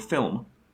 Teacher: the Irish pronunciation of the word film, which has a short schwa after the L sound and before the M. But this does not quite rise to the level of a syllable.